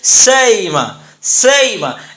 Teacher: بین بین قریب کرنے کی صورت میں سئیمہ کو حمزہ کے مخرج اور حمزہ کے نیچے چونکہ زیر ہے لہذا یا کے مخرج، یعنی حمزہ کو ادا کرتے وقت ہم نہ حمزہ ادا کریں گے نہ مکمل یا ادا کریں گے، دونوں کے درمیان ادا کرتے ہوئے ہم یوں کہیں گے سئیمہ، سئیمہ۔